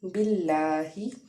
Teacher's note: لام کے اوپر کھڑا زبر ہے اس لیے ایک الف کے برابر اس کو ہم کھینچ کے پڑھیں گے